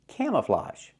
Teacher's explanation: the last vowel is a it's an open sound like hot and stop